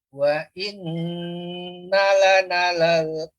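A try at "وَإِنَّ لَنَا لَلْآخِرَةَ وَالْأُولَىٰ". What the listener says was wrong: nanya panjang Bapak, 2 harokat.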